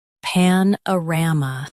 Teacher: Stress ram and keep pan light. Uh is soft.